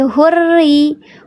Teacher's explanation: Nah, di sini ada lam ta'rif menghadapi huruf ra. Tapi huruf ra di sini kasra, berarti dia dibacanya bukan hurra, tapi hurri. Dia terhampar pangkal lidahnya. Betul, bukan lam qamariyah, namanya lam syamsi karena ada tasydid.